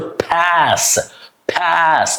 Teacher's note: it's a pure short a. And you you don't make any change in it.